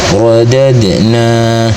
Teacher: Maka cara bacanya dal sukunnya dipantulkan dengan pantulan kecil. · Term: qalqalah sughra